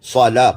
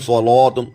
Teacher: اب اس کو صاد کو تو موٹا کریں گے لیکن لام کو موٹا نہیں کریں گے. صلاۃ، کوئی کہتے ہیں صلاتم، یہ غلط ہو جائے گا. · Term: لام باریک